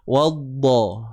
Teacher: Wadda, huruf dad, tepi lidah akan berada di bahagian tepi. Okey, sisi lah, bahagian gerham kita.